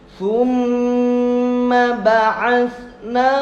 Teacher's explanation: Gunnah musyaddadah jadi agak ditekan lama dan masuk hidung.